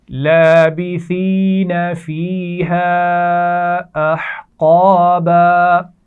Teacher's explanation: ہا کے مخرج کا خیال رکھیے، ہا کو واضح کیجیے اور قاف کو موٹا پڑھنا ہے